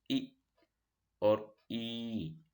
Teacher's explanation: pronounce these sounds friend of the tongue e take e sound front of the tongue is raised towards hard palate hard part of the roof of the mouth ee that side hot palate for the air to pass without